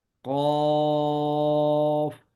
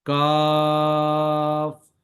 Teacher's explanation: قاف کو پڑھتے وقت زبان کی جڑ کو اوپر اٹھائیں گے، جبکہ کاف کو ادا کرتے وقت اس کو نیچے رکھیں گے